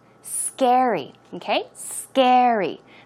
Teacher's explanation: stress goes on the first syllable